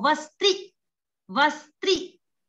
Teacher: यहाँ पर स, त, र, इनमें तीन प्रकार का संयोग है और यहाँ पर कोई भी बीच में स्वर नहीं है